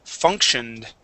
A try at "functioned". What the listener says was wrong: So funk. So we're going to add in that K sound. Functioned. So make sure to add that N there, though.